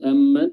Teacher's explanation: Lalu lanjut amman mim suku mim tasdid, di sini mim memiliki sifat gunnah dan dia bertasdid, ya, makanya gunnahnya harus ditahan dan dipanjangkan durasi tasdidnya